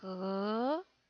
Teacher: H is very similar to the H in English. It's actually lower in the throat, but unless you grow up speaking Chinese, it's almost impossible to learn the difference.